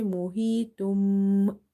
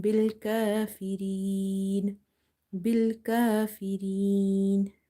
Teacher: So after tanween or noon sakin, if there is a letter ba, you replace the sound of noon sakin or tanween with mim. So instead of saying mohitun, you will say mohitum by doing gunna, nasalization